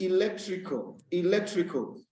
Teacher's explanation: you see that the second syllable is stressed